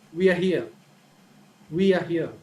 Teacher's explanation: So in the beginning, the tone is high, but as we move forward, the tone is lower. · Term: falling tone